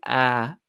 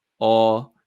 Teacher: you're not changing the sound of the vowel it's still ah becoming longer